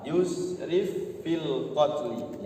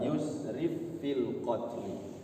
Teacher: Fa ketemu fa, yusrif fil qatli, ya. Langsung masuk kepada fa yang kedua, tidak dijeda. Yusrif fi, nanti khawatirnya jadi hukum saktah. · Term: idgham mutamasilain